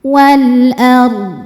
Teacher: Ra dibaca tafkhim karena sebelumnya baris fathah, maka ro-nya tebal.